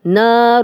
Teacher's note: نار اب تنوین، تنوین کے بعد ہا آ گیا تو ہم یہاں پہ غنہ نہیں کریں گے۔